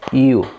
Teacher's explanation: You, una pequeña I y una U, ¿cierto? Un pequeño diptongo, you, sutilmente. Por ahí van a escuchar el you, no, eso está completamente mal, porque nosotros en nuestra fonética española tendemos a que la Y suene como el yo, ¿cierto?